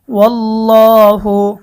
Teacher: আল্লাহ শব্দের লাম মোটা হবে কারণ আল্লাহ শব্দের ডানে জবর আসার কারণে আল্লাহ শব্দের লামকে মোটা